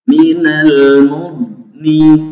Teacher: ketika mendengung pun pangkal lidah tetap harus diangkat ke atas sehingga terdengar mendengung, bunyi dengung yang tebal